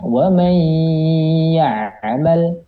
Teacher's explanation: Berarti ketika antum mengucapkan atau ketemu nih hukum-hukum yang idgham bi gunnah, maka suaranya harus keluar daripada rongga hidung, bukan di mulut ya